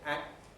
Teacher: K has turned into T, you can't hear it.